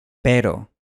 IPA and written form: peɾo (pero)